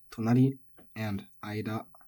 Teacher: Both of these are flat. Nothing crazy going on here. Just don't put any accents in and you're fine.